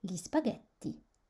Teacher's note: Le G suivi de la lettre L et I donneront le I comme cuillère, mouillé.